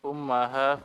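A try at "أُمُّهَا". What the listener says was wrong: wa ummuha. Kenapa jadi fathah? Wa ummuha fil matbakhi.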